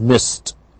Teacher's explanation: If we have an unvoiced sound, however, we have merely the sound t, so that after p, k, f, s, all of these unvoiced sounds, we get merely the t sound, as in miss, the past tense is missed.